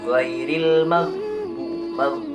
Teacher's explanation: pengucapannya pun huruf ghin ini dari tenggorokan bagian atas